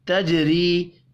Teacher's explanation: تنوین کے بعد تا ہے اخفاء حقیقی ہوگا. تجری جیم ساکن قلقلے کے ساتھ پڑھیں گے. را کو زیر کی وجہ سے باریک پڑھیں گے. · را کو زیر کی وجہ سے باریک پڑھیں گے. یا مدہ کو ایک الف کے برابر کھینچ کر پڑھنا ہے